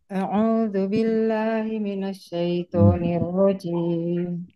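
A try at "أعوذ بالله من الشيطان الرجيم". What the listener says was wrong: A'udzu billahi minasyaiton. Jangan syai tapi syaiton.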